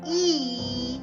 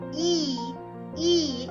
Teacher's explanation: you will notice that your tongue goes to the front of your mouth in a horizontal position and in a vertical position your tongue is high or this high or close to the roof of the mouth